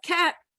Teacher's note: We have cat, which not released at the end.